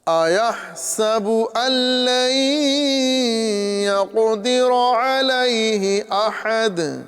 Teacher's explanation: نون ساکن کے بعد میں لام آ رہا ہے، حروف یرملون سے ادغام ہوگا لیکن بغیر غنہ کے · نون ساکن کو جو ہے لام کے ساتھ یہاں پر مدغم کریں گے، یعنی ادغام کر کے پڑھیں گے، لیکن یہاں پر ادغام بلا غنہ ہوگا